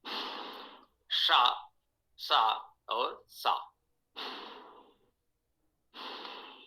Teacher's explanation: व्याकरण में तो हम यही कहेंगे, तालव्य, मूर्धन्य और दंत उच्चारण है